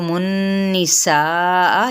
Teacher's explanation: تو النِّسَاء یہاں پہ غنہ کرتے ہوئے سا کو 4 حرکت لمبا کھینچیں گے اور حمزہ کو واضح کریں گے یعنی سختی سے ادا کریں گے